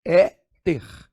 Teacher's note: E eu vou dividir assim, ó, éter. Não é a última, é a penúltima sílaba tônica, é a palavra paroxítona.